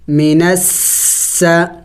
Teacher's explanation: سین سیٹی والے حروف میں سے ہے، یعنی ان کو پڑھتے وقت منہ سے سیٹی کی آواز نکلنی چاہیے